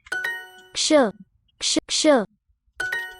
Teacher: Really a cluster, K, sh.